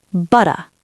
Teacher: It's the same principle as your flap T, just a different execution. Instead of tapping the tongue, flap, we close the vocal cords tight, stop the air, then release, butta. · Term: glottal stop